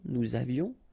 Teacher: Nous avions, final S not pronounced, and then little liaison